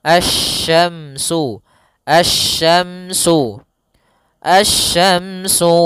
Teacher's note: Maka di sini langsung ke huruf shin, makhrajnya dari tengah lidah kita.